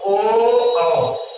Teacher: ओ औ, ये दो वर्ण ऐसे हैं जिनका उच्चारण स्थान कंठ प्लस ओष्ठ होता है।